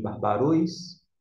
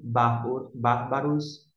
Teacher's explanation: O acento está aqui no bar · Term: sílaba tônica